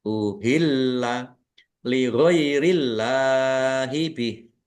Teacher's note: Allahnya dibaca tipis karena harakat di depannya kasrah. Lam fathah berdiri mad thobi'i panjang dua harakat.